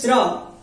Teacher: जब कहेंगे स्रा तो पहले तालु पे बल लगेगा और फिर जीभ ऊपर उठ करके मूर्धा को टच करती है। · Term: तालु मूर्धा